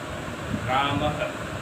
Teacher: विसर्ग का उच्चारण ह इसके माध्यम से बोलते हैं